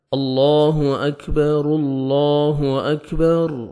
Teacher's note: با کو ہم نے الگ پڑھنا ہے اور را کو ہم نے لام کے ساتھ ملانا ہے